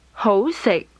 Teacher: Is mid rising, low level.